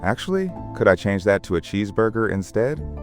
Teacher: Your intonation went up slightly on cheeseburger and then down at the end, which is exactly right for a polite question.